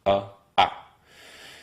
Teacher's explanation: basically english's a vowel with spread out lips